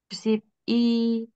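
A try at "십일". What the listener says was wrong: Nah, sibil. Jadi I-nya agak dipanjangin sedikit. Irol sibil.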